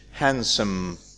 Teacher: we keep s and we drop the d. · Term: elision